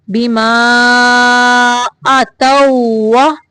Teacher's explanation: واو کی ادائیگی کے وقت ہونٹوں کو گول کرنا ہے، دانتوں کا استعمال نہیں کرنا